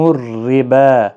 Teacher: را باریک پڑھا جائے گا زیر کی وجہ سے